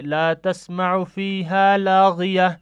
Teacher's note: چونکہ آخر پہ گول تا ہے تو اب ہم اس کو تا کو ہا سے بدل کر پڑھیں گے